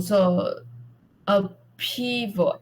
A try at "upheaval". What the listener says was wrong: We pronounce H, upheaval.